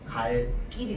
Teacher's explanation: 우리 그 1학기 때 배웠던 그 된소리 대기 규칙 중에서 네 번째 줄에 뭐가 있냐면요. 요 관형사형 어미 리을 뒤에서 나는 된소리라고 하는 게 있습니다.